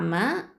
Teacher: மீம் அப்படிங்கிறது ஷஃபத்தான் உதல் எழுத்து